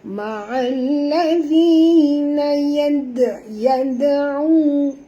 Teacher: Na yad'u. Okey, dal bila dia mati di tengah-tengah kalimah, maka kita kena lantunkan dia dengan lantunan lunak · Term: qalqalah surah